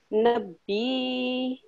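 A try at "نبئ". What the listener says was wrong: So are you pronouncing the ya or are you pronouncing the hamza? So you have to, now you have to pronounce hamza.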